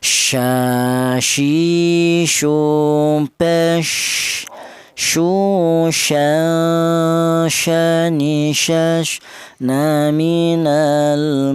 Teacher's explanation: Huruf shin ini keluarnya huruf berasal dari tengah lidah.